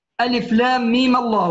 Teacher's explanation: الميم تتحول الى ميم مفتوحه عند الوصل. تمام، تصبح ألف لام ميم الله.